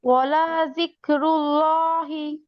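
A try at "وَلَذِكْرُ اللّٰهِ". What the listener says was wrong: লামে টান হবে না, ওয়ালা যিকরুল্লাহি। লামে টান নাই আপু, লামে টান নাই, ওয়ালা যিকরুল্লাহি। ওয়ালা যিকরুল্লাহি।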